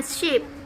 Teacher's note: Sederhananya, ketika kita menyentuh langit-langit antara palatum dan alveolar ridge, kita menghasilkan suara palatal alveolar.